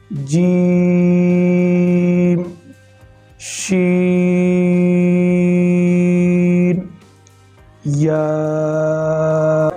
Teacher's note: ان 3 حروف کا ایک ہی مخرج ہے۔ زبان کے درمیان اور تالو کے درمیان سے یہ حروف ادا ہوتے ہیں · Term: حروف شجریہ